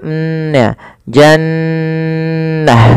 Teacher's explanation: suara nunnya ditahan dulu nnya Jannah tidak langsung Jannah Kemudian pada lafal ta apabila ia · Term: gunah